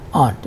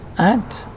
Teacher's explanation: The RP and GA vowel in aunt is also longer than the RP-GA vowel in ant